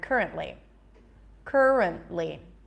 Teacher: the rent is the secondary stress